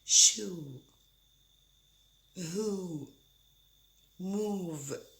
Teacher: The lips are rounded and the tongue is high, but actually nothing touches. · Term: U vowel sound